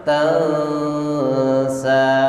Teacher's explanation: Nun mati ketemu sin, dengungnya yang lama. Tansa, tidak boleh sekedar tansa, tapi tansa.